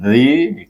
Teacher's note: zal baris bawah, zi bunyinya, zi, keluarkan ujung lidah kita, dan bertemu dengan yang kita baca dengan mat asli 2 harakat.